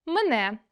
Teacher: наближення першого е до и